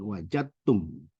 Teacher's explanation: Dibaca fahal wajadtum ma wa'ada rabbukum. huruf dalnya dilebur ke ta, jadi tidak disebutkan.